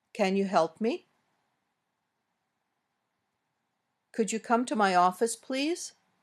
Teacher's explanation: These usually go up at the end, as most yes/no questions do.